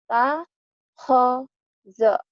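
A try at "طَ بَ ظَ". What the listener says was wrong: Kok khe? Ya lagi.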